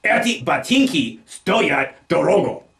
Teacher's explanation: Putting the stress on the first syllable of the word for cost, we wind up with eti batinki stoyat dorogo.